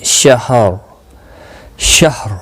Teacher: ہا کا خاص خیال رکھیں اس پر زبر نہ لگ جائے وقف کی صورت میں · اور را ساکن پڑھا جائے گا وقف کی صورت میں، پر بھی پڑھا جائے گا. اس شین کے اوپر جو زبر ہے اس کی وجہ سے یہ را ساکن یہاں پر پر پڑھا جائے گا